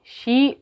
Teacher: یا سے پہلے آ گیا زیر تو یہاں یا مدہ ہو گیا 2 کاؤنٹ